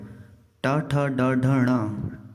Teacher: टवर्ग, मुंह में मूर्धन के पास जीभ टकराती है।